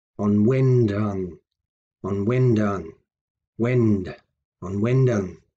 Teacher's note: Notice the stress there in the middle, on wend